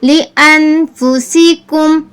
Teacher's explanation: مطلب زیادہ دیر ناک میں آواز نہیں نکالنی، کیونکہ غنہ نہیں ہے، اخفا ہے. اخفا میں ہلکی آواز نکالتے ہیں.